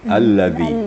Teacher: Huruf yang terdapat pada kalimat itu huruf zal yang perlu Perhatikan, seperti biasa, zal makharijul hurufnya atau makhrajnya adalah di papan gigi atas. Dipertemukan lidah dengan papan gigi atas atau ujung gigi atas. Jadi bunyinya akan terjadi bunyi yang zal, yang lembut.